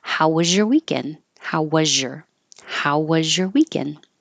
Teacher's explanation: How was your, was really looks like an S but sounds like a Z. And when you have a Z and a Y next to each other, that changes to a zh. So remember, if you have trouble finding zh, say sh first.